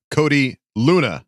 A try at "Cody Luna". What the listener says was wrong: Luna, not Lung. The G is silent.